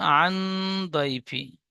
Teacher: ইয়ালিন নরম আওয়াজে তাড়াতাড়ি পড়তে হয়, টান দেওয়া নিষেধ।